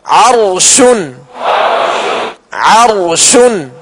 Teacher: عرشن، عرشن. اب را ساکن سے پہلے والے حرف پر زبر کی علامت ہے لہذا را کو پر یعنی موٹا پڑھیں گے